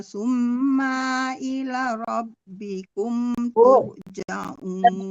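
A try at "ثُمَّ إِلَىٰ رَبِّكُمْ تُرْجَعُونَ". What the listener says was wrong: Ibu terbalik, emaknya tidak panjang. Summa emaknya tidak panjang, yang panjang la-nya. Ibu malah dibalik la-nya yang la panjang, emaknya tidak. A-nya panjang Ibu.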